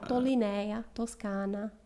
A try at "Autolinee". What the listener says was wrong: You're throwing an A at the end, I think. Linea. No, Linee. It's Autolinee. It is auto. They're all Autoline, Autoline.